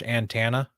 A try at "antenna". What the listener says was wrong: do say it like you're saying Montana. I feel like you're just mostly over pronouncing the T. I'm just like antenna.